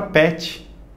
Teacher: Se você não nasaliza esse E, tem a palavra pet.